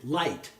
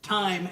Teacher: light is a plosive and time is a nasal and it's totally different you know made at a different way and it sounds different